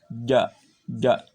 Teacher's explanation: Kalau ja tempatnya tengah-tengah lidah ditempelkan ke langit-langit atas.